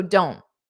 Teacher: It has to be a flap T, which means you don't push out the air, which native speakers commonly do just to avoid taking pauses unnecessarily.